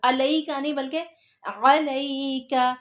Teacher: عین کو بولنا ہے، حمزہ نہیں بولنا